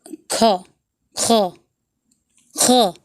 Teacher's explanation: कंठ के पीछे जीभ को पीछे करके बोला जाता है